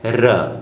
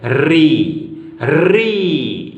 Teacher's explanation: र व्यंजन है, जब हम इसका उच्चारण करते हैं तो हमारी जीवा में कंपन बहुत कम होता है। र जब हम री का उच्चारण करते हैं तो हमारी जीवा में कंपन अत्यधिक होता है। री री इस प्रकार से इसका उच्चारण किया जाता है।